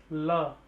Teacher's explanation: ल बोलते ही आप देखोगे कि आपकी जो टंग है, जो जीभ है, वो ऊपर की तरफ फोल्ड हो जाएगी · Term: पार्श्विक